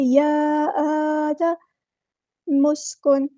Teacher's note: میم کو اپنے سین کے ساتھ ملا دینا، حمزۃ الوصل ہمارا ڈراپ ہو جائے گا اور نون ساکن کی آواز کو یہاں واضح کرنا ہے، اظہار ہوگا یہاں پہ۔